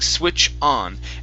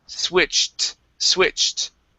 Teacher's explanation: you need to pronounce a t with that Ed so right now you're saying switch on and you're ending at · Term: Ed ending